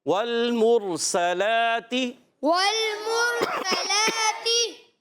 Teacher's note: میم کو را سے ملانا ہے، را ساکن سے پہلے پیش، را پر ہو جائے گا، موٹا ادا کریں گے، اور سین سیٹی کے ساتھ، سین پر زبر ہے، حرکتیں نہیں کھینچیں گے، سیٹی کے ساتھ ادا کریں گے، لام پر کھڑا زبر ہے، ایک الف کھینچ کر ادا کریں گے، اور تا کے نیچے زیر ہے، حرکت ہے، اس لیے اس کو بھی نہیں کھینچیں گے۔